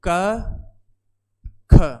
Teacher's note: अघोष की बात करें तो क ख अघोष व्यंजन